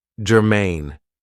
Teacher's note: this is two syllables and the stress is on the second syllable